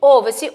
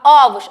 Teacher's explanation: esse primeiro O aí, que é onde tem a tonicidade da palavra, ele não tem um som fechado · esse primeiro Ozinho, ele tem um sonzinho mais aberto, que é o sonzinho do acento agudo, não é isso?